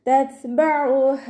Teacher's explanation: ത സുക്കൂനാവുമ്പോൾ കുറച്ച് air pass ചെയ്യുന്ന സൗണ്ടിൽ വേണം ഉച്ചരിക്കാൻ